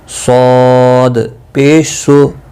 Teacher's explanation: ز سین صاد، 3 حروف، سٹی کی آواز ان میں ہوتی ہے۔ صاد مستعلیہ ہے، پر پڑا جائے گا، ضاد بھی مستعلیہ، طا بھی اور ظا بھی۔ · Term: حروف صفیریہ